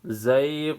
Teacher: یہاں پہ یا لین ہے، یا ساکن پہلے زبر ہے، اس کو نرم پڑھا جائے گا.